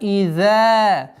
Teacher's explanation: межзубное произношение «за» и долгота в размере 2 огласовок фатхи.